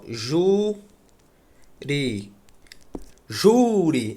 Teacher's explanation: A sílaba tônica é a penúltima, é paroxítona. Ela termina em I.